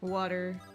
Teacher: Like I'd say like with the D sort of sound rather than the T sound.